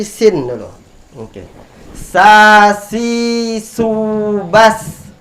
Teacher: ujung lidah bertemu dengan ujung gigi seri bagian bawah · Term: huruf Sin